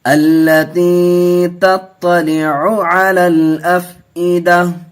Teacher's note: ہائے ساکنہ بنا کر کے وقف کریں گے